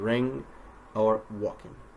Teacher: For NG endings, we must be careful not to turn the sound into a K. The sound that should be coming out of our mouths is our vocal tract in this case, is a nasal N, as in ring or walking.